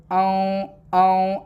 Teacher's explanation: نون کی آواز آپ کو صاف نہیں نکالنی ہے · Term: اخفاء